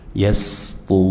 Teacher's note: Ro, tummah tafkhim, tebal. Kita baca dengan mad arid lis sukun, ya 4 harokat, dan akhiri dengan nun, jelas dan dibuka, tidak dimonyongkan.